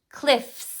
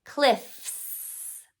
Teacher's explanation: So because my voice box was off, I keep it off when I add the S. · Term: voice box off